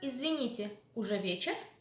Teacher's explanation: Mind the intonation in the general questions. Уже вечер, rising. Уже вечер. Already, уже.